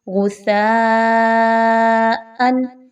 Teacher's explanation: ہم نے سا کی آواز کو بڑا نرمی کے ساتھ پڑھا ہے، لیکن اس میں سیٹی کی آواز کو لانے کی کوشش نہیں کی۔ آپ نے بھی سیٹی کی آواز کو اس میں نہیں لانا، سین کی طرح سا کو نہیں پڑھنا، نہ ہی صاد کی طرح بہت موٹا کرنا ہے، بلکہ کیسے پڑھیں گے؟